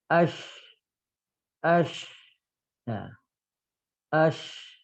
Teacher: lidah tengah ngangkat, tapi hanya mengarah ke langit-langit, dia tidak nempel ke langit-langit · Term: huruf shin